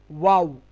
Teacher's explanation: দুই ঠোঁট গোল করে পাতলা আওয়াজে